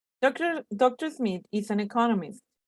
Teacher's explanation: We have to stress the word economist because that has the meaning of the information that we are emphasizing. There are 4 syllables in economist with the stress on the second syllable, economist.